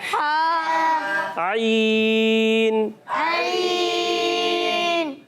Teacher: حلق کے درمیان والے حصے سے عین ادا ہوتا ہے